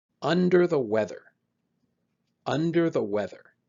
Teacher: When you pronounce this idiom, make sure you stress the correct syllables. Stress un and we. Under the weather.